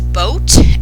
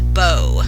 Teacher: the word is boat and the child says bow instead, so leaving off that final consonant with final consonant deletion.